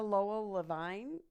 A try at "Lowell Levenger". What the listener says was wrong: That's Lowell Levenger. Yeah, You're missing a letter in there.